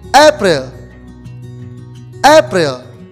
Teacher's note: the stress of the april is in the first syllable